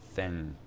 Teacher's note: that n is articulated at the place where you make a g or a k sound · hear the difference um so thin versus thin thing that's actually that's like an N with a little bit of a g or a k attached to it